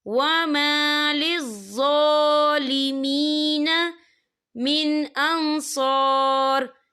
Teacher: یہاں ظا کے اوپر جو ہے کھڑی حرکات ہے، تو ہم اسے 2 یا 3 عدد کے برابر کھینچ کے پڑھیں گے